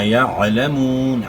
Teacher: عین کے آواز گلے کے درمیان سے نکالنی ہے